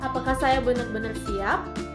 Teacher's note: Jadi nada naik ini di akhir kalimat menunjukkan pertanyaan atau ketidakpastian.